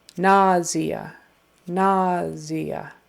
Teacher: it's really pronounced nazia with more of a z na and the primary accent is on the first syllable NAIA